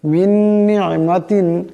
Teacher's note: এখানে নুন সাকিনের পরে নুন আসছে, ইদগাম হয়ে যাবে, ইদগামের এক আলিফ পরিমাণ গুণনা হবে।